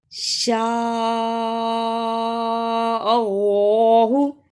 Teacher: اللہ کو پر اس لیے پڑھا کہ اللہ سے پہلے زبر ہے